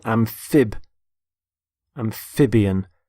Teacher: notice the stress on the middle syllable